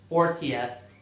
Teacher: com o T mais forte, inglês mais britânico, T britânico